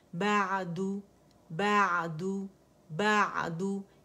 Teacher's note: بعدو، بعدو، بعدو، اس سے کیا ہے مڈل تھروٹ میں آپ کا ایپیگلوٹس ہے، آپ اس کو جب با سکون کے ساتھ ادا کرتے ہیں تو ایک تو عین میں توسط ہے، آواز پارشلی چلتی ہے · بعدو، بعدو، اسے بعدو، بعدو جھٹکا نہیں دے گی، بعدو، بعدو ایسے نہیں کریں، بعدو، بعدو، ٹھیک ہے. پراپر سے نکالنا ہے مخرج سے، مڈل تھروٹ سے